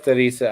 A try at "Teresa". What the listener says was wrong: Teresa? No, it's Teresa. Teresa. There's no L in it. Teresa.